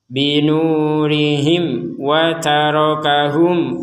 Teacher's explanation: Mim mati bertemu wawu, kita baca jelas.